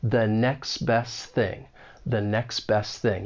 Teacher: you don't really hear that T it's almost like it's muted · And this is when sounds may get removed because the final T in next and the final T in best are going to elide. And this often happens with the T when it comes between two consonant sounds. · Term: elision